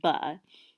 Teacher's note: So "ba" would be very different than, for example, the word "s," right, or the sound "s," because it just stops. So we would say it's a bilabial stop. We would say "ba" is very different from other sounds because it's voice.